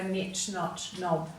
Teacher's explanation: eventually over time they dropped the k sound, so now we just go knit, knot, knob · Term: silent K